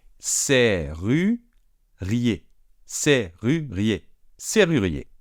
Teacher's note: même s'il y a deux R, on prononce comme si c'était qu'un seul R